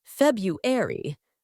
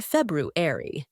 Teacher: reflects its Latin roots but over time the pronunciation has changed the first R in February is often silent in Modern English